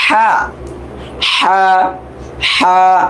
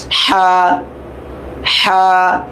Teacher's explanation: গলা ভিতর থেকে হা, হা